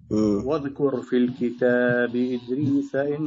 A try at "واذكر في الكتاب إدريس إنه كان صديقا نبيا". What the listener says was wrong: لا نقلقل لا لا لا نقلقل ولا نمد الحرف أكثر من المد الطبيعي واذكر في الكتاب إدريس إنه كان صديقا نبيا تفضل